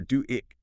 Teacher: You'll often hear do it. That little W links the ooh and the I.